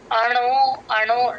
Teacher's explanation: అణో ఇది high pitch లోనే start చేస్తాం అణో అణో అణ దగ్గర కొంచెం పైకి లేపాలి అణోరణీయం తమనుస్మరేద్యః అక్కడ రేద్యః